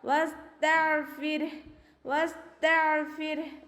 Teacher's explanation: റോക്ക് സുക്കൂനും അതിന് മുന്നേ ഉള്ള അക്ഷരത്തിന് കെസ്റ ആയാൽ റോയെ നമ്മൾ താഴ്ത്തിയാണ് ഉച്ചരിക്കുക